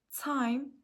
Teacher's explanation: the diphthong I in the word time began with a low vowel position and moves towards a high fronted position.